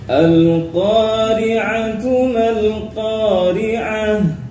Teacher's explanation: Di ayat yang pertama ada Al-Qamariyah, yaitu al yang tidak bertemu huruf yang bertasdid setelahnya. Kemudian di qa fathah diikuti alif, itu adalah contoh dari mad asli atau mad tabi'i, ya, panjang 2 harokat